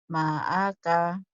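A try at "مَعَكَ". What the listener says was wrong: Ma'aka. Ainnya nggak keluar tuh. Ma'aka.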